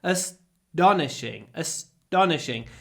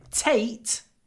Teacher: a big pause before the T but I don't say t I say like Russian with no aspiration because after s t is not aspirated so it sounds a little bit like this asish astonishing it's